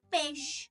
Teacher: A gente tem mania de querer comer esse i aí, esconder ele.